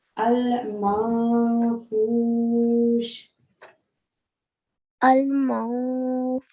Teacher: noon is partially hidden in this instance, and the sound is al-manfush. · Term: ikhfa